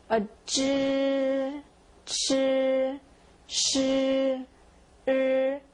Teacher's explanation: These are grouped together because they all have the kind of R sound tagging along.